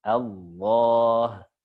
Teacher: Allah, bukan Allah. Nah, jadi yang berperan adalah makhraj di huruf lam, bukan di bibir. Kalau bibir nanti kecampur huruf waw. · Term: Lam ketika tebal